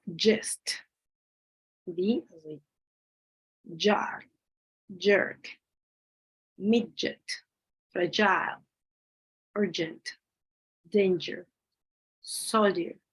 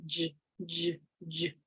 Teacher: It is voiced because you say j, j, j. You can feel the vibration. Palatal alveolar, which means that is go in between these two, the alveolar and the palatal.